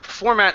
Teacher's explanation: Format as a verb and noun is always going to be format with the stress at the beginning.